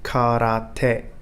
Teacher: the syllables in japanese are said in a monotone voice unlike chinese and some other languages japanese is not a multi-tonal · Unlike Chinese and some other languages, Japanese is not a multi-tonal language, so its words are best pronounced with equal emphasis on each syllable